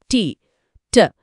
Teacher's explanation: నాలుక కొన్న పై దంతాల వెనుక తగులుతోంది. కరెక్ట్ అక్కడ నాలుక గాలిని ఆపుతుంది.